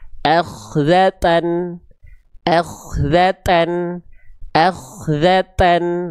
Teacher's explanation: Dibaca dengan bunyi vokal konsonan an. Jangan lupa huruf tanya ada percikan nafasnya ya.